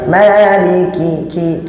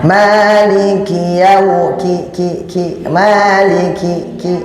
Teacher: Kemudian memiliki syiddah, keras. Maliki, ki, ada hembusan sedikit ki. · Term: hamas